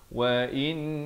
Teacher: Itu kalau waqaf, dan ibtidak pada wa innahu. In itu didengungkan 2 harakat, wajibul gunnah, dan hu dipanjangkan 2 harakat.